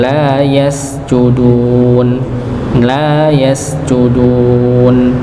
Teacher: Ya, untuk huruf sin sukunnya dialirkan. Ya, huruf sin dialirkan